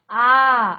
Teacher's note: आपका मुंह खुल जाता है। आ समय दुगना लगता है। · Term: दीर्घ स्वर